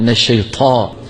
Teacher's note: من الشيطان، طاء، الطاء مفخمة، لابد فيها من طاء، تفخيم الطاء وعدم همسها. كثير من اخواننا بيهمسوا الطاء، طاء، لكن من الشيطان.